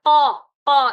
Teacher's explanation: یہاں پہ قاف حروف مستعلیہ ہے، اسے پور پڑھنا، قا قا اس طرح کی آواز آنی چاہیے۔